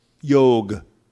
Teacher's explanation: in Hindi, they drop the half syllable, yog. But in Sanskrit, that is known as a half syllable, and that is to be pronounced, yoga.